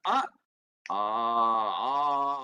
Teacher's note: அந்த ஆ ரெண்டு மாத்திரை வரணும். ஆனா இதை இழுக்க முடியும் நீட்ட முடியும்.